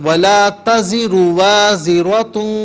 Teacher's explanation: ولا تزر میں را کو کھینچیے مت